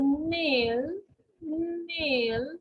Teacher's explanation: air comes out of the nose when we say this sound